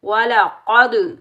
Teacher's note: قاف حروف مستعلیٰ میں سے آ رہا ہے تو اس کو موٹا پڑھیں گے۔ وَلَقَدْ جب کلکلا کریں گے تو ڈبل ساؤنڈ آئے گا۔